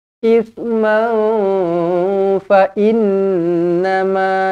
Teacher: nun yang bertanda sabdu wajibul gunnah.